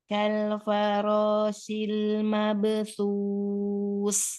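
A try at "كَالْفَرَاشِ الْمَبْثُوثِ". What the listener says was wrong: Shil, ulang ini. Shin ya, belum dapat nih. Shin. Kal farashil mabthus.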